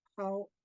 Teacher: So how how um how um so when it's said correctly, you could hear three different things going on. The high tone, the glottal stop, and then the low tone.